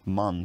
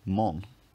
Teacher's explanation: a gets rounded before a nasal consonant